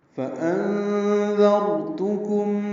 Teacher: تا کو جلدی پڑھنا ہے، کاف باریک، میم ساکن پہ اظہار شفوی ہے · انذر میں نون ساکن ہے، حمزہ کو نون سے ملانا ہے، اور اس کے بعد دال آنے کی وجہ سے اخفا ہوگا، نون کی آواز چھپائیں گے، دال نرمی سے پڑھیں گے، را سے ملائیں گے، را پر پڑھیں گے کیونکہ دال پر زبر ہے.